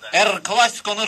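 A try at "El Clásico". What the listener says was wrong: Er Klasiko'da R hərfi yoktu.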